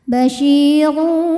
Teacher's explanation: Sebab rnya ini berbaris damah tanwin. Maka ro dibunyikan dengan tebal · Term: tafkhim